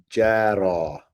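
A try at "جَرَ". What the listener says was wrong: So you're saying ra correctly, yeah, but it doesn't have an alif here. So that if you say jara, that would put an alif right there. That would be with a sukoon.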